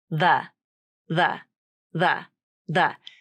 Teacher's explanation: So instead of the tongue tip coming out between the teeth, the. Instead, you simply just bring your tongue tip forward and it hits the back of the front teeth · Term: voiced TH